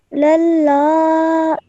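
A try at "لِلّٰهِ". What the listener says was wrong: Just try and round your mouth a little bit more when you join these together, okay?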